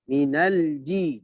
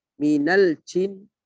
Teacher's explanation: Ja di sini huruf syiddah, ya. Aji dengan suara tertahan, ya.